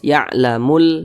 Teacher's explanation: Karena huruf lamnya itu dia dibaca izhar. Huruf lamnya dibaca izhar. Terbaca dia dengan jelas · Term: izhar qamariyah